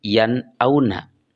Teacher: nun mati bertemu dengan hamzah, maka bunyi nunnya harus jelas